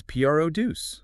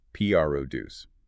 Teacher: When P R D U C E becomes a noun, the stress shifts entirely to the first syllable